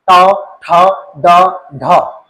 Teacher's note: ये मुड़ जाती जीभ और हवा बाहर आने में दिक्कत होती है। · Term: स्पर्श संघर्षी व्यंजन